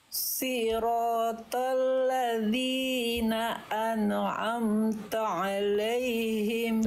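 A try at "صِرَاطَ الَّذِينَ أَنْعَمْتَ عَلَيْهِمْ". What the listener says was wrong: Nun sukun jangan mantul. Ane, gak ada ane. An'amta alaihim. An'amta.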